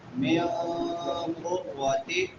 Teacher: نون ساکن ہے اور نون ساکن کے بعد حروف اخفاء میں سے قاف ہے تو یہاں پہ اخفاء ہوگا